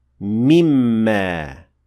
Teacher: it will automatically lose the noon at the end of it, since it will be merged into the mim